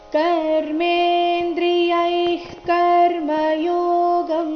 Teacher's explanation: ಯೈ ನಂತರ ಇರೋ ವಿಸರ್ಗದ ಉಚ್ಚಾರಣೆ ಅರ್ಧ ಖ ರೀತಿ ಬರಬೇಕು. ಯಾಕಂದ್ರೆ ಮುಂದಿನ ಶಬ್ದ ಕರ್ಮಯೋಗಂ ಕದಿಂದ ಶುರುವಾಗ್ತಾ ಇದೆ.